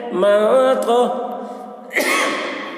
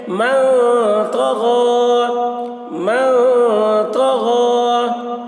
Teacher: من تو، نون ساکن کے بعد حروف اخفا میں سے تو آ رہا ہے، اس لیے نون کی آواز کو ناک میں چھپا کر پڑھیں گے، اس کو اخفا کہتے ہیں